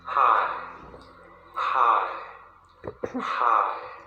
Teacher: the low tone is going to drop. Okay, so the place that it starts and the place that it ends are different.